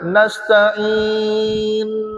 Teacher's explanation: Jangan rapat bibir. Rapat bibir aja, dia tukar huruf nun jadi mim.